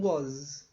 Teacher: esse parece um a virado aqui ele é um o tá a tua boca fica mais Redonda